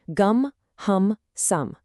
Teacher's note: Your lips stay pressed together, creating this vibration. The bounce turns into a continuous resonating hum.